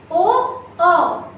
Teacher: जब आप ओ बोलते हो तो आपके ओंठ की आकृति कैसी होती है? गोल आकृति की होती है। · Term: वृत्तमुखी